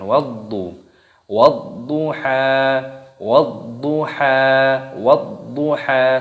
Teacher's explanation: ada huruf dha yang berharokat tasydid, ini dimasukkan, diidghamkan, ditekan